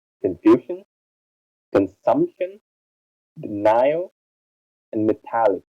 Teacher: Words with 3 syllables. The second syllable is stressed